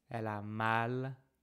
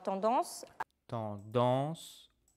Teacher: a is the normal vowel that is not coming from the nose. En is the nasal version of a.